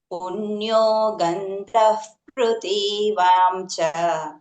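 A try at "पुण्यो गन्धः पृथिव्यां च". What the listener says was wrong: పృథివ్యాం గ్యాప్ ఏమొద్దు, కలిపి పృథివ్యాం చ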